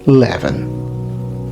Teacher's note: There's kind of a palatalization after the L there